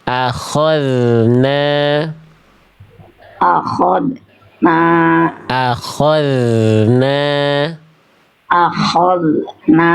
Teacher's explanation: zal sukun juga memang tidak boleh dibaca dengan terputus suaranya